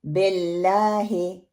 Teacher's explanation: पहली गलती, बा और हा को उसकी जो जेर आ रही है उसको हम मजहूल पढ़ देते हैं। बे को मोटा करके फैला के पढ़ते हैं, बिल्लाहे बिल्लाही, ये दुरुस्त प्रोनाउंसिएशन है।